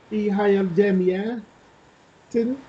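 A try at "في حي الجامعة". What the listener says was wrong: Not tanween, kasra, because here in the start we have alif lam, we cannot use tanween, so we'll use only kasra.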